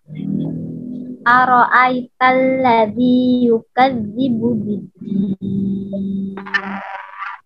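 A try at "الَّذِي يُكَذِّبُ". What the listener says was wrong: Nah, zalnya jangan ditahan seperti ini, yukadzi. Tapi biarkan dia mengalir. Yukadzi. Kalau yang awal, zalnya yukadzi ditahan. Jadi zalnya harus bergetar ya. Yukadzi, masih mengalir.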